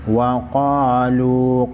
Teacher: क़ाफ हुरूफ़ मुस्तालिया में से है, मोटा पढ़ेंगे। वाव मद्दा है, वाव मद्दा को एक अलिफ के मकदार खींचेंगे।